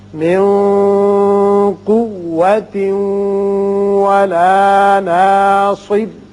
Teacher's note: یہاں تنوین کے بعد واو ہے ادغام بغنہ ہوگا